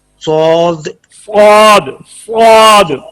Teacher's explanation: पुर कैसे करना है कि जबान का दरमियान और जबान की जड़ तालू की तरफ उठाएंगे तो हर्फ ये स्वाद पुर हो जाएगा